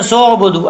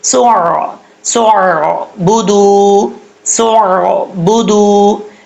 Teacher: ایسا نہیں کرنا، سین کے بعد جو الف آ رہا ہے سین کو الف سے نہیں ملائیں گے، سین کو عین سے ملائیں گے، عین ساکن ہے اور جب سین کو عین سے ملائیں گے اس کا آپ